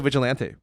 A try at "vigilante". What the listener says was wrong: The way you said that was like kind of like sounded like you're trying to say caliente, like vigilante. Vigilante.